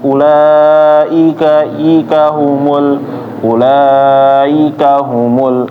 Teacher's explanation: ketika membaca ulaika, i-nya dijelasin ya. Jangan cepat-cepat masuknya. Jadi i-nya kurang jelas.